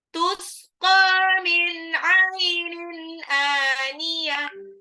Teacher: Ainin, tanwin ketemu alif, sudah izhar lagi. Aniyah, tak marbutoh berubah menjadi ha, ha besar